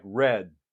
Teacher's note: fact all the time when we stop something um like red I'm doing the main stoppage of that D sound in my throat